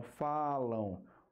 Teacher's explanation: a letra M Mas qual é o som o som é de U · Como o som passa pelo nariz também, além da boca, a gente tem o ditongo nasal. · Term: ditongo nasal decrescente